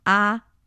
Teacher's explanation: the first tone is supposed to be a five five